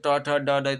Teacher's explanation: ट ठ, ड, ड मूर्धा से उच्चार स्थान होता है।